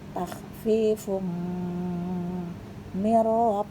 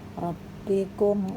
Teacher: jika ada nun sukun bertemu ro maka tidak dibaca mendengung tapi dilebur masuk ke huruf ro